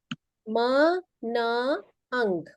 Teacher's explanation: Third, जैसे resonating है nasal and oral cavities. कुछ साउंड्स हमारी नाक से प्रोड्यूस होती हैं, क्योंकि हम नाक से हवा छोड़ते हैं, उनको बोलते हैं नेजल साउंड।